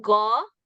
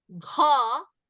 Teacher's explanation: So that is the aspirated sound. Once again, go, unaspirated, Gha is aspirated.